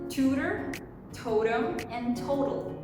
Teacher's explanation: She starts off pretty crisp, and in the middle of the word sounds a little bit more rounded, and it rounds itself to a almost D sound